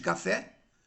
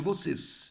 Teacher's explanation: embora o café tem o e aberto e o vocês tem o e, né, fechado